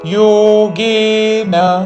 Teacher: యోగే రెండు దీర్ఘములు చివరిలో న హ్రస్వము. యోగేనా అని దీర్ఘము పలకకూడదు చివరిలో.